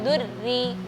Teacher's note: kalau sudah ada tasydid itu getarannya berlebihan. Dur, harusnya durri. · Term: huruf ra